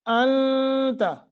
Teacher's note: نون ساکن ہے، آگے تا حروف اخفا میں سے یہاں تھوڑا لمبا کریں گے